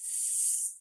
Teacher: I'm just putting my tongue slightly up and the air is escaping down either side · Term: S sound